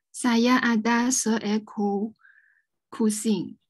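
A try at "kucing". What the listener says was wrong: Not kusing, not kusing. How to pronounce C? C is not k. What is it? Chi. Yes, kuching.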